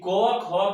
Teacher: क ख का जो उच्चारण होता है कंठ से होता है। क ख ग घ कुछ भी है इस लाइन का, सबका होगा कंठ से।